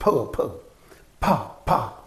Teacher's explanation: you obstruct the air in the mouth and you release it suddenly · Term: plosive